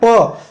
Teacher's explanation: तो दोनों ओठ सट रहा है ना, ऊपर और नीचे वाला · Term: पवर्ग